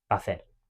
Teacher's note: We're making a sort of longer vowel of the same one. But in informal speech, it just becomes one singular vowel, such as in the phrase va a hacer.